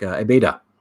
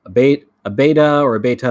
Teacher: sometimes the t sounds more like a d when it's more casual like a beta okay a bait a beta or a beta